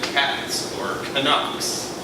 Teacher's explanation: So you get s before non-sibilant voiceless consonants, such as in cats or Canucks.